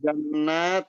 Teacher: Jannat nun tasdid wajib dengung.